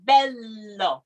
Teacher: just be careful with the l that it is very tip of the tongue like behind your teeth because if we get too much tongue in there then you'll